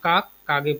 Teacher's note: রাঢ়ীতে শব্দের অন্তে অঘোষ সঘোষ হয়ে যায়, সঘোষ অঘোষে হয়ে যায়।